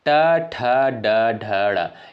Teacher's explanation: ट वर्ग के अंतर्गत जो भी वर्ड आपके आते हैं वो किससे उच्चारित होते हैं? मूर्धा यानी मूर्धन्य से उच्चारित होने वाले वर्ड होते हैं।